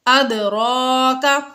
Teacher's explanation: اد دال میں حروف قلقلہ پر ساکن ہے، حروف قلقلہ ساکن ہے، اس لیے یہاں پر ہم نے قلقلہ ظاہر کر کے پڑھا۔ ادراک، را کے اوپر کھڑا زبر ہے تو یہ پر پڑھنے کی صورتوں میں سے ہے، تو اس صورت میں را کو پر پڑھیں گے۔